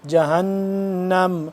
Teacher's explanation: کیا پڑھیں گے جہنم، ہا نون زبر ہن نون زبر نا، اس پہ ہم کریں گے غنہ کیونکہ نون مشدد ہے